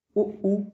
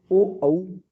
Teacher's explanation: अब आप पूछेंगे कि वृत्तमुखी, तो वृत्तमुखी में सीधी सी बात है कि जिन स्वरों के उच्चारण में होठ गोलाकार अथवा वृत्तमुखी होते हैं उन्हें वृत्तमुखी स्वर कहते हैं